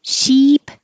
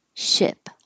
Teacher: sheep high tension ship lower